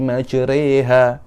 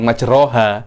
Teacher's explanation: Bismillahi majreha, bukan majroha, tapi apa? Majre, re itu imalah.